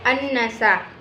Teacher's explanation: karena ada huruf nun yang bertasydid cara membacanya masuk dengan mendengung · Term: ghunnah musyaddah